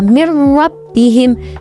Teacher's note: nun mati bertemu dengan ra. Maka suara nun mati dimasukkan ke dalam huruf ra. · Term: idgham bila gunnah